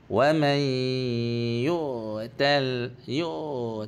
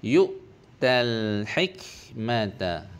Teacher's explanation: hamzah tu bersifat tegas dan terputus